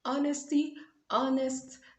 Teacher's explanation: guys remember that the h is silent